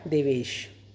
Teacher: उसी तरह से देव प्लस ईश, ये देवेश कैसे बना, देव का अ और ईश का ई दोनों मिलके बन गए आपके ए, इसलिए हो गया देवेश।